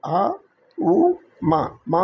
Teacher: మ అనే శబ్దానికి రెండు పెదాలు కలుపుకుంటుంది.